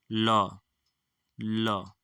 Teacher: ल का उच्चारण स्थान क्या हो जाएगा ल ल ठीक है दंत हो जाएगा